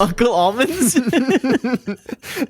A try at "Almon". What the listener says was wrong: Not Almond. Almon, Almon.